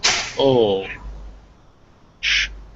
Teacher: it's further back from the mouth but with your lips rounded like an ooh so it's between ooh and ah